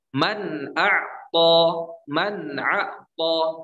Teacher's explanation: Nunnya jelas, tidak ditambah gunnah. Man a'ta, tidak ditahan, tapi langsung dilepas. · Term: izhar